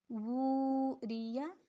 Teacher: اب ری اور یا کو ایک حرکت، ٹھیک ہے؟ لیکن وو کو دو حرکت